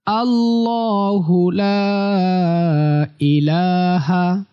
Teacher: লা তে তিন আলিফ টান হবে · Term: 3 আলিফ টান